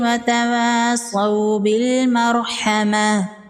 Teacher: میم مشدد ہے، یہاں پر غنہ ہوگا۔